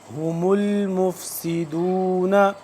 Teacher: یہ والی ہا سینے کے قریب سے اور حلق کے آخر سے یہ والا ہا ادا ہوتا ہے